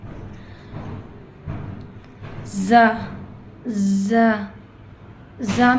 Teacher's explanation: زا میں buzzing sound آتی ہے